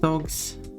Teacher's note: So it's the voiced G, but an unvoiced S.